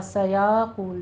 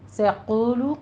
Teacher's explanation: س یا دونوں کو آپ نے ایکول رکھنا ہے، اس کو لمبا سیاقول نہیں کہنا ہے، ٹھیک ہے، سیاقول نہیں ہے، سیا فتح کی بس ایک حرکت برابر آپ نے 1 سیکنڈ ادا کرنا ہے اس کو. سیقول قوف کو آپ نے پر پڑھنا ہے اور واو مدہ کو دونوں ہونٹوں کو گول کرتے ہوئے ادا کرنا ہے.